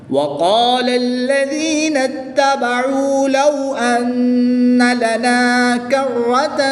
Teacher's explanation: را تشدید کے اوپر زبر ہے تو را کو پور یعنی موٹا پڑھیں گے۔